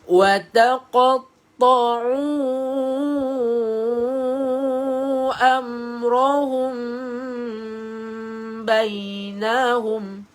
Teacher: Mim yang kosong ini dengung bacaan dia.